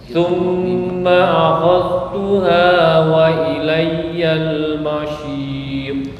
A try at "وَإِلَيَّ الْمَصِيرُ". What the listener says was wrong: Ya, itu kecampur dengan shin. Masih so, si, su, so, wa ilayyal masir. Masih so, lepas. Jangan tertahan.